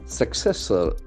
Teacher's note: The sound K is very prominent when we have two C letters coming together. Successor. The accent falls on the second syllable.